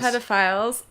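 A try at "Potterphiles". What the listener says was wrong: Potter. Potterfiles. Stop saying pedos. Potter.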